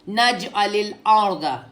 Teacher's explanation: جیم پہ قلقلہ, کیا ہوئے گا؟ قلقلہ, واپس ریباؤنڈ ہوگا